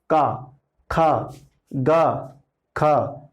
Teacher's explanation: का वर्क जो है उसका उच्चारण जो स्थल है वह है कंठ